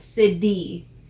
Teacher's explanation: We say city almost with a D sound.